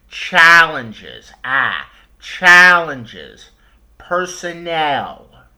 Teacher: I'm stretching out that vowel in the stressed syllable · I'm taking the vowel in the stressed syllable I'm taking the vowel sound and making it a little longer